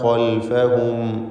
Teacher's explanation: ഖൽഫഹും ഈ പദത്തിൽ ഖായിനെ പൂർണ്ണമായ തഫ്ഖീം നൽകി തടിപ്പിച്ച് സ്വരഭാരത്തോടെ ഉച്ചരിക്കുക. ഇസ്തിഅലാന്റെ ഹർഫാണ്.